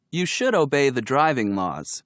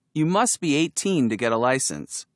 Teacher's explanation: notice the vowel sound of uh in should and must when they are pronounced quickly